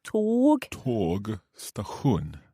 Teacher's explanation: because we just have one G on tåg, then it's a long vowel. A long one.